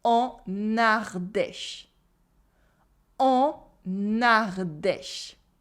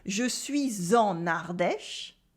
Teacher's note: In the en, the n is supposed to be silent. But here, because you have la liaison, we say en Ardèche.